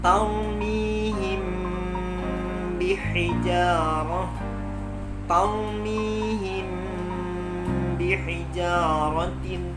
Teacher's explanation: Dengung atau gunnah yang terjadi antara mim dan ba disebut bacaan ikhfa, maka harus terjadi proses gunnah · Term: ikhfa syafawi